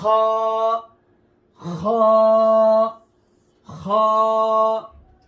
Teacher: খ, হলকের শেষ হইতে খ উচ্চারিত হয়। হলক মানে যে কণ্ঠনালীর শেষখান থেকে এই হরফ উচ্চারিত হয়।